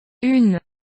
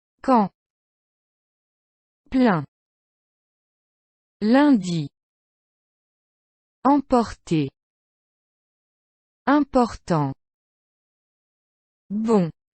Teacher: you just need to know that the vowel becomes nasal, so start pushing that air through your nose. Try humming with the letter M then the letter N.